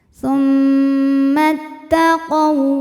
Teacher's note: mimnya ghunah musyaddadah karena mim bertasdid cara bacanya adalah didengungkan